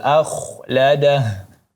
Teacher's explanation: huruf kha menjadi tebal karena huruf kha sebelumnya ialah huruf berbaris fathah maka menjadi tebal.